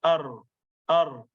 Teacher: it is like vibrating at the tip of the tongue when we actually pronounce that letter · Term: takrir